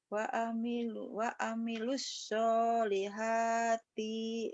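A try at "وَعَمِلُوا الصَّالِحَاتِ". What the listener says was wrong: I-nya pendek. Pendek T-nya. U-nya nggak dibaca.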